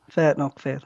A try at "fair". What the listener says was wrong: Fair. Not R. Don't pronounce the R part.